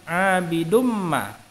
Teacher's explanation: Huruf yang bergaris bawah pada lafal abidumma termasuk bacaan idgham bigunnah. Tanwin huruf dal bertemu dengan mim, maka mimnya ditasydidkan dan didengungkan.